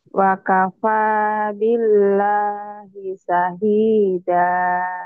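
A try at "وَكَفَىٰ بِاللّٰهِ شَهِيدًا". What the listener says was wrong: Shinnya gede. Ulang lagi. Wa kafa wa kafa wa kafa billahi syahida.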